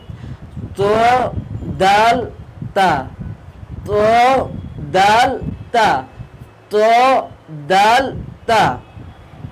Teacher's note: জিহবার আগা সামনের উপরে দুই দাঁতের গোড়ার সঙ্গে লাগাইয়া